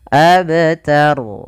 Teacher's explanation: yaitu ta tipis rnya tebal ro tafkhim awalnya ini rnya kita wakafkan menjadi ro sukun Karena Dia berakhir